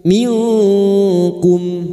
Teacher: Nun sukun bertemu kaf ikhfa hakiki. Kita samarkan bunyi nun sukun dan mendengung selama 3 harakat.